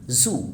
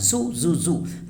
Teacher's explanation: For Z, teeth close together, tongue near upper teeth, voice on vibration. For U, lips rounded and pushed forward, tongue high and back. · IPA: /zuː/